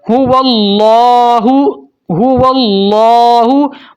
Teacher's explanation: موٹا پڑھنا ہے لام کو اور ایک الف تک کھینچنا ہے۔ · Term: لام کو موٹا